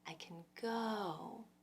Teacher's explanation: I can, it almost disappears. All you really hear of it is the k and the n and a little tiny vocal bridge that connects them. Kn. So imagine taking the vowel out all together and just trying to get from the C sound to the N sound. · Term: unstressed position